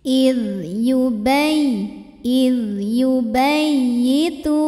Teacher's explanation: Jadi ini tidak ada dengung, ini cukup pakai nabar. Jadi agak kita bentak sedikit ya, kita naikkan intonasinya